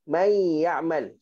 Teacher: May ya'mal. So bunyi nun ni hilang. Seolah-olah nun ni ditenggelamkan oleh ya. Sebab tu nama dia dekat sini idgham.